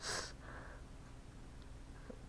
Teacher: Samech is not actually super tiny. So, samech makes the voiceless alveolar fricative, the same as S in English.